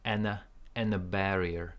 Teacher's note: there is no d n is stronger it cancels the D